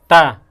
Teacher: जीभ जो हमारी है दांत से स्पर्श करती है